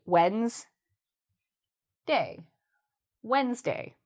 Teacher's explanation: A lot of people want to say the D, Wednesday, but you don't have to say the D. You can just say, without the D,